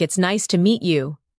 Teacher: The voice goes up slightly at nice and falls gently at you. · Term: rise and fall